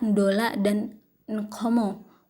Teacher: kata ndola dan nkomo, which begin phonologically with a syllabic nasal.